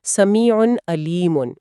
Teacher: یہاں عین پر تنوین کے بعد پھر عین آ رہا ہے تو سمیع کی آواز صاف اور تیزی سے ادا ہوگی